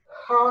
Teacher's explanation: it is voiceless. Okay, there is no vibration, and the place is glottal.